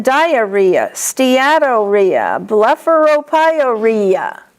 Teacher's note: Rhea, the accent is on re.